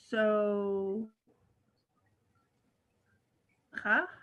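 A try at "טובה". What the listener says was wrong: That's actually a tet. Starts with the t sound. it's a vet. See its little backside, tova. So there's the root word tov in there, tova.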